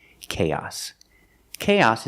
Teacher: the final s makes a true s sound s with no voice